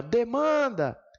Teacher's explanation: qual é a sílaba mais forte de demanda? É o man. Então, ela é, de fato, uma paroxítona. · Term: sílaba tônica